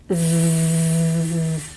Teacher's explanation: there's some movement here of the vocal folds so the vocal folds are in the larynx and so they're actually vibrating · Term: voiced